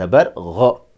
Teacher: Kha کی طرح Ghain کو گہرائی سے تلفظ کیا جائے گا۔ Ghain zabar، اردو میں 'گا' کی طرح نہیں۔